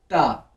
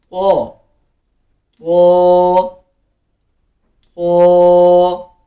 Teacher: ये ता नहीं है, ये है तो। मोटा पढ़ना है इसको, मेक इट हैवी। तो तो तो लाइक दिस।